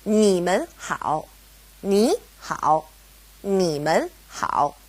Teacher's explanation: because we have 们separating ni and hao, they both go back to being third tone